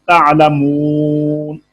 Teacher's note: اس میں ہم نے وقف بالاسکان کیا ہے، نون کو ساکن کر دیا ہے۔